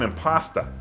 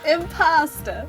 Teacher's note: there's a lot of accents in the United States where you don't pronounce the R at the end of the word